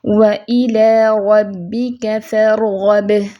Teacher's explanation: وَإِلَىٰ رَبِّكَ فَارْغَب، را ساکن ہے، توسط کی صفت ہوگی، حرف متوسطہ ہے، با پہ قلقلہ بھی ہوگا کیونکہ حروف شدیدہ ہے، حرف شدہ ہے تو اس پہ قلقلہ بھی ہوگا اور فوراً سے آواز بند ہوگی۔